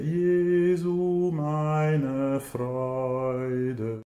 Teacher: Chacun de ces trois mots, Jésus, ma joie, a un accent tonique sur la première syllabe.